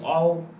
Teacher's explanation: औ इसकी भी आवाज कहाँ से आ रही है, जिह्वा के पश्च भाग से आ रही है।